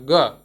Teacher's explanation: ग आपका बहुत कम ताकत में बोला जा रहा है, तो उसमें आपको अल्प प्राण लग रहा है, आपकी कम सांस लग रही है